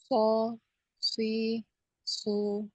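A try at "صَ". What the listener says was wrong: Tuh, naikkan lagi pangkal lidahnya. So, dengan permukaan lidah ya. Jadi lidahnya ini naik semua kecuali tengahnya.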